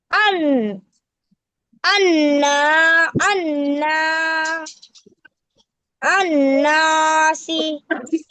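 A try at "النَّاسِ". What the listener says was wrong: নাসি, জি মাশাআল্লাহ।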